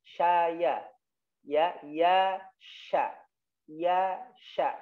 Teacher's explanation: Kalau sya tengah lidahnya naik